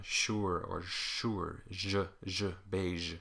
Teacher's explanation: the front of the tongue is bunched up around the alveolar ridge, a little bit behind, and the middle of the tongue is at the soft palate, basically like a palatal vowel. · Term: palatal alveolar